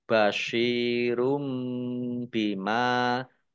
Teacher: Lam fathah berdiri mat tobi'i, basyirum bima, shot kasroh ya sukun mat tobi'i panjang 2 harokat. Domah tanwin bertemu dengan huruf ba, bacaan iklab dibaca membalik. Tanwinnya dibaca mim, ditandai mim kecil berdiri.